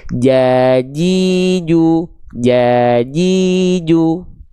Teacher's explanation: Huruf jim pula dilafalkan dari wastul lisan dari tengah lidah.